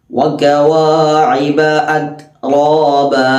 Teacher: വകവാഇബ അത്റാബ അത്റാബ. അവിടെ റാ ശ്രദ്ധിക്കണം, തഫ്ഖീമാണ്, തഫ്ഖീമാക്കി ഉച്ചരിക്കണം.